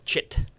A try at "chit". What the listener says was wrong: It sounded like you said shit both times.